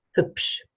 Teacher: the B is at the end of a syllable, so it's devoiced